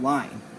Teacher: you'll also hear the ah sound before a y